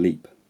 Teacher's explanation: the vowel in leap is cut short because it's followed by a voiceless consonant